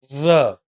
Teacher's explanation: ર બોલતી વખતે છે ને દાંતમાં વાઈબ્રેશન થશે જુઓ ર થયું એટલા માટે એને વાઈબ્રેશનને કંપન પણ કહેવાય અને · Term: પ્રકંપ